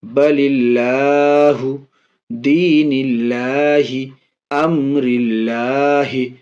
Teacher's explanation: زیر ہو تو لفظ اللہ کے لام کو باریک پڑھیں گے، ہلکا پڑھیں گے